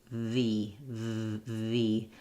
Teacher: I can feel vibration in my lip and teeth are touching, but my upper lip is not involved at all. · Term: V sound